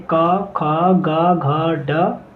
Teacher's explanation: का वर्ग का उच्चारण स्थान है कंठस्थ, जिसमें वर्ड आते हैं का, खा, गा, घा, ड।